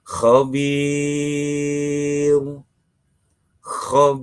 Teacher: Tapi ketika diwakafkan, diberhentikan, maka panjang bacaannya menjadi 6 ketuk. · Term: mad arid lisukun